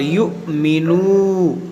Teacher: ये वाव मद्दा है, वाव साकिन से पहले पेश है, इसको खींचेंगे एक अलिफ के बराबर